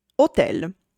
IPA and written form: oˈtɛl (hotel)